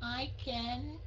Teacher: Cái âm N xuống giọng.